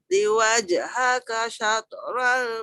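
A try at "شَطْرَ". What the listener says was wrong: Sikit wajhaka syatral tebal. Syatral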